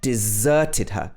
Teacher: stresses on the zur